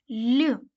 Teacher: це приголосний м'який дзвінкий Чому він м'який так тому що і пом'якшує попередній приголосний